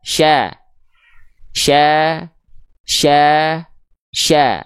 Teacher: Tengah lidah naik ke langit-langit ada sifat tafasyi menyebar udara dari mulut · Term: huruf syin